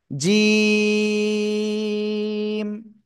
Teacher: জিহ্বার মধ্যকান, তার বরাবর উপরে তালুর সাথে লাগিয়ে 1 2 3 আলিফটা নিয়ে আমরা উচ্চারণ করব শক্ত করে। ঠিক আছে, বাতাস বন্ধ হবে।